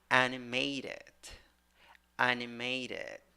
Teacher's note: primary stressed first syllable, secondary stressed in the third syllable.